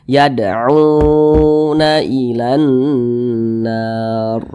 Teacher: Ini namanya mad tabi'i. Mad tabi'i panjangnya 2 harokat. Nah, untuk lebih mempermudah kita dalam belajar, 2 harokat itu kira-kira temponya 2 ketukan.